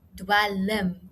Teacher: Nou dit word toegeskryf aan die uitspraak van 'n ekstra spraakklank tussen hierdie l en m klank, want ons sê dwelm, so ons hoor daar die ekstra klank, waarna ons ook dikwels as 'n schwa vokaal verwys.